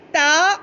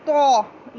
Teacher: ता जो नुक्तों वाला है वो बारीक पढ़ना है, जो तो है वो मोटा पढ़ना है